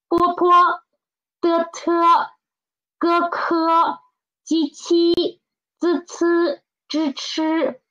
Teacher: the tongue position and other the shape of the lips are all the same. The only difference is the air. One is soft and one is stronger. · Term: aspirated and unaspirated